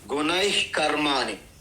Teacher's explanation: ఓకేను అంటే విసర్గం తర్వాత క గాని ఒత్తు క ఖ క ఖ ఏ వచ్చినా ఆ విసర్గాన్ని మనము జిహ్వామూలి అంటారు. అంటే ఇంగ్లీష్లో హెచ్ ఎలాగైతే పలుకుతామో మూలం నుండి వస్తుంది, గొంతు మూలం నుండి ఆ విధంగా మనము ఉచ్చారణ చేయాలి